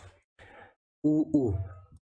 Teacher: इनका वर्ग है ओष्ठ्य, और इनका उच्चारण स्थान क्या है, होठों से